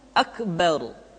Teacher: Huruf ra mesti dibaca tafkhim atau dibaca dengan suara yang tebal ketika dia berharokat fathah atau berharokat dhammah, kemudian ra sukun didahului oleh fathah